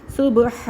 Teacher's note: ہا کو حق سے نکالنا ہے ہواؤں کے شور کے ساتھ